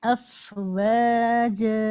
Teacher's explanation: فا کی ادائیگی میں ایک ایئر فلو باقی رہے، ہونٹوں پر محسوس ہونا چاہیے، تب ادائیگی فا کی مکمل ہوگی.